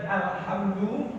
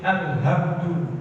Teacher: Ya tadi alhamdu menjadi alhamdu. Hak tenggorokan tengah, hak tenggorokan bawah.